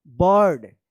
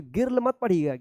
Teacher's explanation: देखिए आई के बाद आर है ना, तो इस आई का अ उच्चारण होगा।